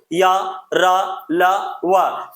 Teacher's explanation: अंतस्थ व्यंजन यानी कि य, र, ल, व भी अल्पप्राण है